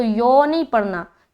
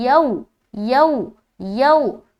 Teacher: यहाँ पर देखिए वाव साकिन है, वाव साकिन से पहले ज़बर है, तो यहाँ पर वावलीन का कायदा करेंगे, नरमी के साथ हमें जल्द पढ़ना है, मारूफ का भी ख्याल रखना है और लंबा भी ना होने पाए।